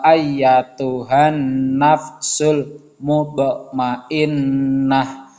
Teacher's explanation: membacanya itu kita membacanya dengan memantul tapi tidak terlalu kuat yang sedang-sedang saja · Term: Qolqolah Sugro